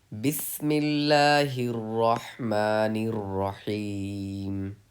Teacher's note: ये बिस्मिल्लाहिर रहमानिर रहीम में रॉ पे तशदीद है, तो हमें सख्ती करनी है।